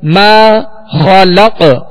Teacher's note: ماشاءاللہ یہاں الف مدہ ہے، الف سے پہلے زبر ہے میم پر، تو اسے 2 حرکت یعنی 1 الف کی مقدار کھینچ کر ادا کریں گے. ما خلق خا کو پر پڑھیں گے حروف مستعلیہ میں سے، اور قاف پر ہم نے وقف کیا، یہاں ساکن ہے اور وقت کی صورت میں ہم نے اس کو ساکن کیا تو یہاں پہ قلقلہ ہوگا.